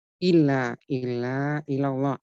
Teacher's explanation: Ilallah, alif lam jalalah, alif lam ketemu dengan lam, lam samsiah dibaca lebur ke huruf lam, kemudian lam jalalahnya dibaca tebal karena sebelumnya berharokat fathah, la-nya 2 harokat, dibaca mat tabi'i dibaca 2 harokat.